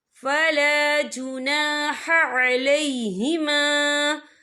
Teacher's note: یہاں خالف سے پہلے زبر ہے، اور اس پر چھوٹی سی مد بھی ہے، تو ہم یہاں 3 یا 4 حرکت کے برابر کھینچ کے پڑھیں گے۔